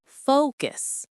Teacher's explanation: Many learners pronounce it like focus with equal stress. But in English, the stress is on the first syllable.